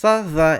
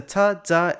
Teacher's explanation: The dental fricatives /θ/ /ð/ and /ðˤ/ from MSA shifted to /t/ /d/ /dˤ/ in Egyptian Arabic